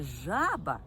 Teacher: у слові жаба перший склад я вимовляю вгучніше жаба тобто я роблю наголос на цьому складі у слові жабеня